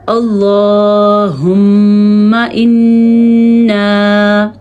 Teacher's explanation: میم اور نون کا غنہ ادا کرتے ہیں، تو ہم اور انا، ان دونوں میں ہم نے غنے کو ادا کیا ہے